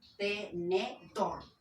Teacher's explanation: Dor sería tónica. Y te y ne sería átona.